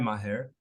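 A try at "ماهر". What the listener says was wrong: Yeah, you pronounced it correctly, actually.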